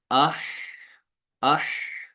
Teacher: آہستہ آہستہ ہا کی آواز جو ہے نا وہ ختم ہو جاتی ہے اور آہستہ آہستہ پست ہوتے ہوتے ختم ہو جاتی ہے.